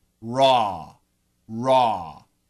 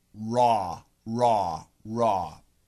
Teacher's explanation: it's a very vertical sound it starts up on top with the r and ends down below with the a w